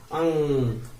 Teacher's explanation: तो देखिए उसमें नाक से आवाज आ रही है, तो अनुस्वार का उच्चारण जो होता है नाक से होता है